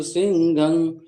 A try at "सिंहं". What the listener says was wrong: सिंहन हो गया, घा नहीं है, हा ही है।